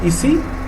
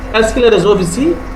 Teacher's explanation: because of the question mark there, you have to raise your voice there.